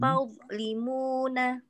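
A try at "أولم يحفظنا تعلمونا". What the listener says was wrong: Ya, terdengar sudah terangkat teh suaranya. Terdengar pangkal lidahnya ngangkat. Nah, cuma ada sedikit putus dengan huruf di depannya. Nah, tadi kita bahas bahwa huruf wo ini suaranya itu ngalir. Ya, au, au, au. Nah, suara yang ngalir itu sambungkan dengan huruf di depannya.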